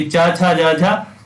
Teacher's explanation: चा छा जा झा ये आपके तालु होते हैं, तालव्य व्यंजन इन्हें कहते हैं